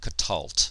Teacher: The accent is still on the last syllable. This is two silent schwas next to each other.